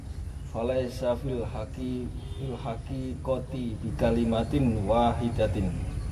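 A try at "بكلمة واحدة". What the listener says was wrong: Enggak gitu bacanya. Wahidatinnya Pak, tinnya dihilangkan, tapi bi kalimatin wahidah. Jadi harokat terakhir dalam satu kalimat kita tidak baca. Bi kalimatin wahidah, kayak baca Quran.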